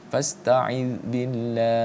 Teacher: Karena kita mad arid di sukunnya kita panjangkan 4 sampai dengan 5 harakat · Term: mad arid lisukun